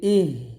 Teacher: যেহেতু হার উপরে সাকিন আসছে তাহলে এখানে আমরা বাতাস বের করব